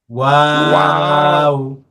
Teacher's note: ওয়াওটা হলো দুই ঠোঁট গোল করে।